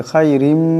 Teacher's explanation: এরপরে মিম আসছে ইদগাম হয়ে যাবে ইদগামের এক আলিফ পরিমাণ গুন্না হবে